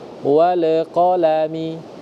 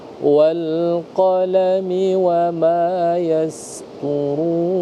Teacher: ketika ada lam, biarkan lam itu ya mengalir tanpa harus terpantulkan